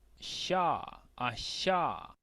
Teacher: Es como una CH, pero más suave que la CH normal que nosotros solemos hacer.